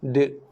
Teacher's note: Dal bila mati ada bunyi lantunan qalqalah.